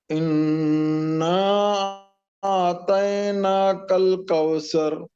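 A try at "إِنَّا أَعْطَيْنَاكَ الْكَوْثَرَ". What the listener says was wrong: तैना नहीं, तैना मोटा करके।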